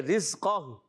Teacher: قاف کو پر رکھنا ہے اور ہا کو ساکن کر دیں گے